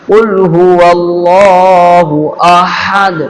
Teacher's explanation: قل هو اللہ، اللہ کا اللہ موٹا کرنا ہے